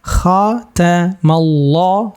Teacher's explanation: Kha tebal, kha jangan kha, enggak seperti itu. Kha tetap ada getarannya, tapi getarannya kha di pas tenggorokan bagian atas.